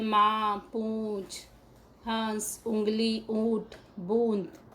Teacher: इसका उच्चारण करते समय हवा नाक और मुंह दोनों से निकलती है, इसे चंद्र बिंदु कहते हैं। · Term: अनुनासिक